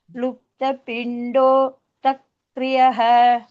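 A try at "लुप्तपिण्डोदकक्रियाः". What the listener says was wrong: तक्रिय न दक दक का सम्पूर्ण वक्तव्यं दख नास्ति दक एव रस्व पिण्डोदक क्रिया क्रिया अत्र द्वित्वं भवति अत्र पिण्डोदक क्रियाः इति भवति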